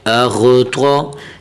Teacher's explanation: الف کے اوپر جب حرکت آ جائے تو وہ حمزہ پڑھا جائے گا، اور یہاں حرف غین اور یہ حرف طا، یہ دونوں پر کر کے پڑھیں گے، موٹا کر کے، ٹھیک ہے، منہ کو تھوڑا سا گول کر کے